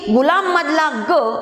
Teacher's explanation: अग्रस्थानी असल्यामुळे हा ग कसा उच्चारला जातो तर तालव्य उच्चारला जातो, म्हणजे जीभ टाळूकडे जाऊन उच्चारला जातो.